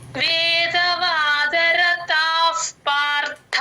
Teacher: పార్థ ర కింద థ వత్తు మహాప్రాణం ఉంది గమనించండి